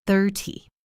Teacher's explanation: When I say 30, my voice stays flat.